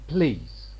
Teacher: And this is the case of L here in please. this L following P, because P is going to be aspirated, this L is going to be devoiced. So we have to put a small circle below L to show that it is devoiced.